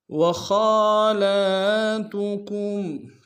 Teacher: خا کے اوپر کھڑا زبر ہے، خا کو موٹا ادا کریں گے۔ لام کے اوپر کھڑا زبر ہے، دونوں کو ایک امتحان میں کھینچیں گے۔